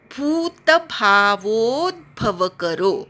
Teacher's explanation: भू दीर्घ आहे, वोचा पूर्ण उच्चार करायचा, मग अर्ध्या द चा उच्चार करायचा. तिथे खाली जो भ आहे तो पूर्ण आहे, द जो आहे तो अर्धा द आहे.